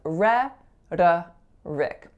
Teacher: notice that my second syllable has an alveolar flap going right into a schwa